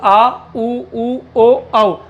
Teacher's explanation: जिह्वा के पश्च भाग से बोले जाने वाले स्वर